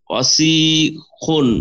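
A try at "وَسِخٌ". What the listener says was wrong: না, অসিখুন, কোনো মাদ হবে না, অসিখুন,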